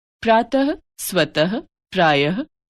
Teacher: विसर्ग अह का उच्चारण ह व्यंजन के रूप में किया जाता है।